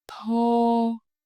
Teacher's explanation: You should feel a strong puff of wind, just like with the English word top.